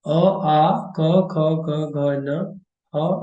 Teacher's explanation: these are the letters which are pronounced through throat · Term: kantha